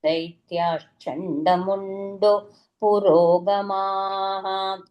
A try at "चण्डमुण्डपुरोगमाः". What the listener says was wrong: Yes, Chandamunda, not Chandamundo.